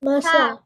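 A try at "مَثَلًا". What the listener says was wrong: মাসা আলাদা বলা যাবে না, হারাকা কি করতে হয়, তাড়াতাড়ি পড়তে হয়, মাসা। তারপরে আজকে কি পড়লাম, লাম ফাতাতেন লান, লান মাসালান। মাসালান, মাসালান, মাসালান, মাসালান, সেটা 3 বার, মাসালান, মাসালান, মাসালান।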